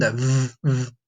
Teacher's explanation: The V, this one, what I want you to do is I want you to put your front teeth on your bottom lip. And I want you to make that sound kind of like a buzzing sound, that v, like that.